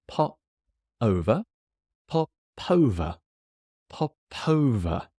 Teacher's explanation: The P joins the next word.